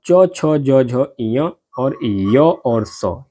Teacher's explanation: जिन वर्णों के उच्चारण में जीहवा का मध्य भाग यानी कि तालु से स्पर्श करता है उन्हें तालव्य वर्ण कहते हैं